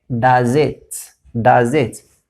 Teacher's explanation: So here we have Z. At the end of does we have the sound Z, and at the beginning of it we have a vowel I.